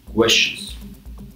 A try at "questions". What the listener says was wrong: You're throwing almost like a U in there again, like questions, where it's questions. Like someone's being questioned down at the precinct.